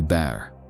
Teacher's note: You feel your mouth open wider, short and bright.